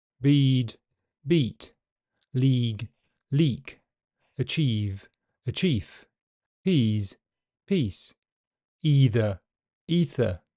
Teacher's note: it is often shortened to the length of a short vowel. This occurs before voiceless consonant sounds. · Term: prefortis clipping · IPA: /iː/